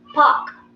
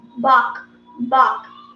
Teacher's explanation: When you have p, it is p. There will be an explosion in your mouth